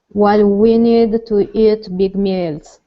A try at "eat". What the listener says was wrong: Okay, so here you're saying eat. Okay, you're opening your mouth. It's only eat. Instead of eat, while we only need to eat big meals.